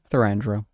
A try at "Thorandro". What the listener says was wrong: I feel like you're adding another syllable. I think it's Thran.